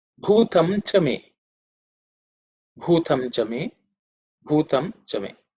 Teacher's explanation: the word bhu, the first letter is bhu, is the fourth letter in the pa varga, so it has to be aspirated